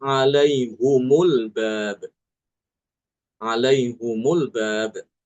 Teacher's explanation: Dia membacanya dengan mendomahkan ha.